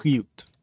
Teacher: Voiceless uvular fricative. I start really far in the back of my throat,